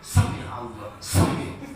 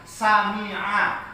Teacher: Jadi Sami'a, sempurna fathah ainnya, baru masuk ke lafzul jalalahnya